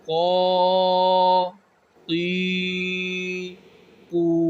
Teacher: تو یہاں پر بھی کاف اور قوف میں فرق رکھا جائے گا کہ جو یہ کاف ہے یہ باریک پڑھا جائے گا اور جو نقطوں والا قوف ہے اس کو موٹا پڑھا جائے گا